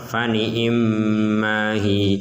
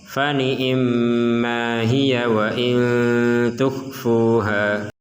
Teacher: Jika berhenti di kata hiya maka dibaca panjang. Contoh, fani immahi. Jika dilanjutkan maka dibaca pendek. Contoh, fani immahiya wa in tukhfuha.